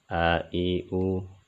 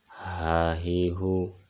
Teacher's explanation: حمزہ اور ہا یہ دونوں حروف حلقی میں سے ہیں اور یہ حلق کے اس حصے سے ادا ہوتے ہیں جو سینہ کی طرف ہے